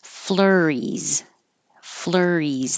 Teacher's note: The S sounds like a Z.